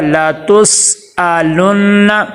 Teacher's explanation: لام کے اوپر زبر ہے، حرکات غیر مدہ میں سے ہے، لمبا نہیں کرنا ، تا کو سین کے ساتھ ملائیں گے، لا تس، قلقلہ